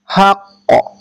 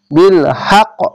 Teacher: বিল হাক এখানে কলকলা হবে হাক্ক এভাবে ধাক্কা মেরে কলকলা হবে